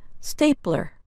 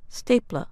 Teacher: One difference between British and American English is the sound of er at the end of a word. In American English, that sound is a strong er, as in stapler. In British English, the sound is closer to ah, stapler.